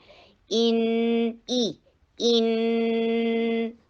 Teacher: حمزہ کے نیچے کسرہ ای کی ساؤنڈ کرنی ہے. لوور جو کو نیچے لے کر آنا. ای ان نہیں بولنا.